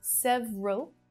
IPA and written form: 'sev (ə) rəl (several)